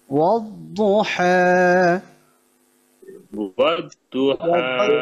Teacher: এই আয়াতের মধ্যে দদ মোটা করে উচ্চারণ হবে